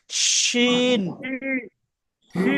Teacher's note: এটা সিটি হবে না, শুধু শক্ত হবে। শিন।